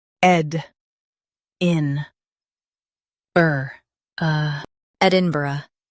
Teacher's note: Stress ed and keep in-burgh smooth.